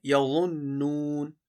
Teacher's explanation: یظنون کی نون مشدد میں غنہ ہوگا